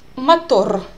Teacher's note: I think we cannot find exact equivalent in English because Russian r is a little bit different from English r. Russian is more rolled r.